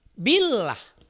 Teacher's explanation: Kalau sebelum lafaz Allah didahului oleh huruf yang berbaris kasroh, itu tarkik.